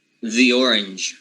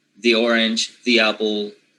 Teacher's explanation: if it is followed by a vowel, then it changes into the lax E when it is followed by a vowel